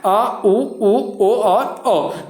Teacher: जिन स्वरों के उच्चारण में जीभ के पीछे का हिस्सा उठता है उसे क्या कहते हैं, पश्च स्वर कहलाता है